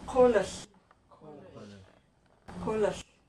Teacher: So we can have a barred L next to another consonant with no vowel in between